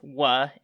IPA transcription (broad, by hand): w